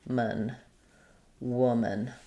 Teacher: So there's no there's no man sound in woman. It's just a little schwa.